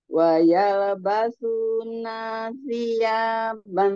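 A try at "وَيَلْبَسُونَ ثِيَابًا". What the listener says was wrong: Nanya jangan keseret, Nanya jangan keseret. Wayal basu nasia langsung. Nah, jangan ban di sini jelas aja.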